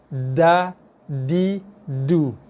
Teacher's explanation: ujung lidah akan sentuh belakang gigi itu yang atas · So, kawasan sentuhan, ujung lidah akan sentuh belakang gigi berserta dengan sedikit kawasan gusi, tempat tumbuhnya gigi. Ujung lidah akan sentuh belakang gigi kita yang atas, kena belakang gigi dan juga kena sedikit kawasan sentuhan gusi. Kena gusi dan gigi sikit. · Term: huruf Dal, huruf dal